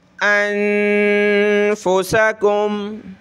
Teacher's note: نون پہ اخفا کریں گے یعنی ناک میں آواز پیدا کریں گے